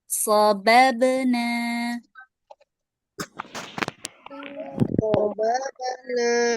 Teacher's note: huruf nunnya masih dibaca dua harokat ya, walaupun dia sukun